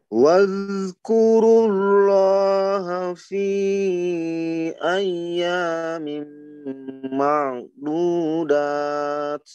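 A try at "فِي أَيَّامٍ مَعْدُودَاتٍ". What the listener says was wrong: Diyaknya sudah bagus ya. Diyaknya tekankan lagi bunyinya karena dia itu ada naber ya ketika bertasjid. Fi ayya ayya, jangan ayya. Begitu kurang. Ada enggak penekanannya? Ada tapi kurang, tapi harus dikeraskan lagi ayyamim.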